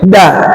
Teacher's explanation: Sementara da ujung lidahnya nempel ke tempat nancepnya gigi seri.